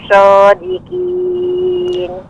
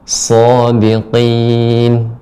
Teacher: Adapun shodikin itu masih kaf Ibu. Shodikin yang benar shodiqin. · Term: Qaf